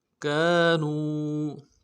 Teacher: کاف کے ساتھ الف مدہ ہے، 1 الف مدار میں کھینچیں گے